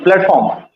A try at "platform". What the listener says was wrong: you don't have to emphasize a lot